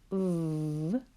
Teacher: where there's a vibration with our teeth at the back of our bottom lip